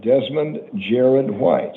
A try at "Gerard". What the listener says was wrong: Yeah, you said Jared. Gerard. J-A.